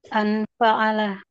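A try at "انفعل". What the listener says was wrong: Enggak. Jangan di A. Kasrah. Infa'ala. Sama dengan ifta'ala. Hamzah waslnya kasrah.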